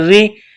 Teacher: را کے نیچے زیر ہے تو را کو باریک کرنا ہے